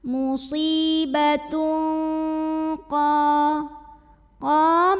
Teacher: tanwinnya ini dibunyikan samar-samar, siap-siap menuju qaf disertai bunyi dengung. Karena qaf makhrajnya jauh dari nun, maka bunyi dengungnya lebih besar. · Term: ikhfa